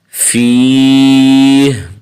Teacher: اصل میں فی ہی ہے، وقف کی صورت میں ہا کو ساکن کر دیں گے